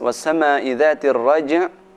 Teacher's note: sebelum terakhir berupa huruf qalqalah, maka suara pantulan kuat.